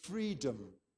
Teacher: it's our friend the schwa, which the British like a lot more than the Americans do